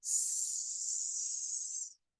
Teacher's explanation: when we make the S sound, there's no vibration in the voice box.